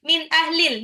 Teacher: Min ahlil nunnya dibaca jelas karena izhar